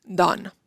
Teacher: una O abierta que igual no tenemos en español, pero sí la tenemos en inglés en palabras como done, que es más abierta que la O del español.